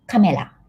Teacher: In Japanese, we don't have ra, ri, ru, so we pronounce this like L in English. So this is camera.